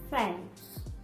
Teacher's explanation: No vídeo anterior eu ensinei para vocês o som do TH voiceless, sem som, como em thanks. Eu não uso as cordas vocais e eu só faço um soprinho